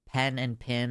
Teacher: Where I'm from, USA, pen and pin are pronounced identically.